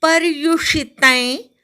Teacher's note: पवर आघात, यू नंतर पोटफोड्या श आहे.